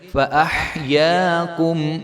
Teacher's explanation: ہا کو ہم باریک کر کے پڑھیں گے